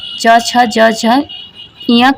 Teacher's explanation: च वर्ग च छ ज झ य का उच्चारण तालु से होता है।